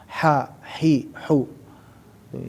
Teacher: Huruf ha, huruf yang makhrajnya ada di tengah-tengah al-halqu, yaitu tenggorokan bagian tengah